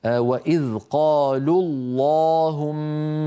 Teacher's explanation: من الخط وصلا للتخلص من التقاء الساكنين، فنقول وإذ قالوا الله، فاللام لام قالوا هي التي جاورت لفظ الجلالة وهي مضمومة، لذلك نفخم اللام.